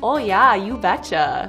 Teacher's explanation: if you're from North Dakota, you've got some long O's